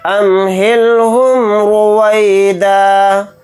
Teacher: یہاں پر را کو موٹا یعنی پر پڑھیں گے کیونکہ را کے اوپر پیش ہے